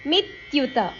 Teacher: ಮಿ ಅಕ್ಷರದ ಮೇಲೆ ಆಘಾತ